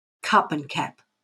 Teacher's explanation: in australia it's the a and the u that are similar cup and cap are similar